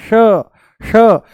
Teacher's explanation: जैसे ही हम बोलते हैं श, जैसे ही बोलते हैं हम श, मूर्धा ऊपर से बोला जाता है श श, जीभ को थोड़ा सा ऊपर घुमा करके तालू से लगा करके बोला जाता है श